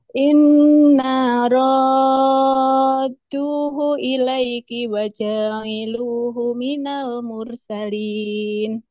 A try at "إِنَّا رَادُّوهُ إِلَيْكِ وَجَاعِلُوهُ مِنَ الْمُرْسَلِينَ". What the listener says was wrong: Baik, Mumtaz. Barakallahu fiik. Bagus.